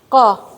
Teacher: زبان کے آخری حصے سے. قاف، آپ نے دیکھا زبان کا جو آخری حصہ ہوگا نا وہاں سے قاف ہے.